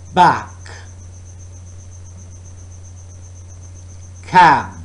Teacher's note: Oral passage is blocked by closing the lips, and again, this is a bilabial sound.